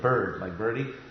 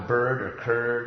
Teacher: the r is actually a vowel in bird or curd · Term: vowel r